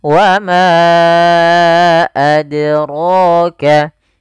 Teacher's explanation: Mad panjang jaiz boleh, munfasil adalah terpisah, yang dimaksudkan hamzahnya terpisah daripada atau di lain kata, sehingga ma kita panjangkan dulu 4 harokat atau 5 harokat untuk kadar mad jaiz. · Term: mad jaiz munfasil